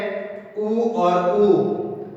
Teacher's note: इसका उच्चारण है ओष्ठ से होता है, इसीलिए इन्हें हम ओष्ठव्य स्वर कहते हैं।